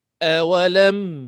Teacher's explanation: Rapatkan bibir. Ada dengung tapi sikit, sekejap aja.